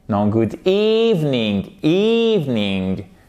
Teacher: Vous avez votre i long